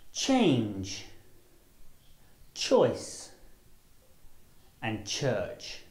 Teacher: The ch sound is made through the mouth and is unvoiced, which means that you don't use your vocal cords to make the sound. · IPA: /ʧ/